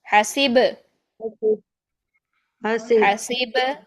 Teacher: سین کی کسرہ، سین کی زیر کو لمبا نہیں کرنا